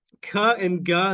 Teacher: the back of your tongue touches your Vellum blocks the air and then it pushes away it pushes its way out and we get a little puff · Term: velarplosives